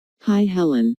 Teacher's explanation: notice that the ight sound in hi is extended to show that is very pleased to see Helen how's